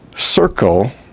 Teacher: the l there actually is what we call a syllabic l it takes all the emphasis of the syllable as if it were a vowel